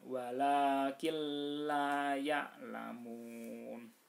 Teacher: Nah, jadi nun sukun bertemu dengan lam, maka dibaca izgham bila gunnah. Nunnya dihilangkan langsung masuk ke lam, lamnya ditasdidkan. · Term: idgham bila gunnah